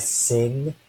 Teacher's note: the ng sound is what we'll think of as the velar nasal stop